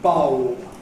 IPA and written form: bʌob (bulb)